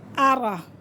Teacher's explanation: रा के पास ज़बर है तो इसे हम पूर करके पढ़ेंगे और हमज़ा को हमज़ा की ही आवाज़ निकालेंगे